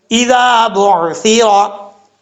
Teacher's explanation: ذال ہے، بغیر سیٹی کے پڑھا جائے گا. ذال جو ہے یہ سیٹی کے ساتھ نہیں پڑھا جائے گا